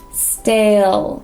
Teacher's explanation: So here we have a ST, stale. And we have another dark L, so stale.